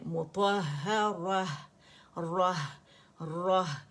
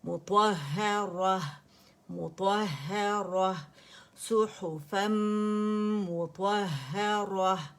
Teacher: ہا باریک ہے, را موٹی ہے